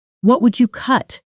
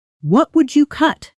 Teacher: Your voice drops on the last word. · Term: Falling